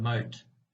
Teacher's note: To produce the second T sound, the T in the English word moat, the speaker stops the airflow by placing the tip of the tongue on the alveolar ridge, which is immediately above the upper teeth